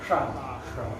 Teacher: तो आगे की जबान ऊपर को फोल्ड कर लेंगे थोड़ा सा, है कि नहीं, ऊपर की ओर घुमाएंगे तो हवा आगे टकराएगी, वहां टकरा के निकलेगी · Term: मूर्धन्य